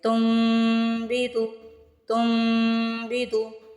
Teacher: یہاں پہ بھی آپ تن نہیں پڑھیں گے، تم پڑھیں گے اور میم پہ غنہ کریں گے